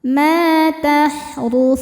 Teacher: mad thobi zohiri sebab ada alif sebelumnya berharakat fathah. Cara bacanya panjang dua harakat.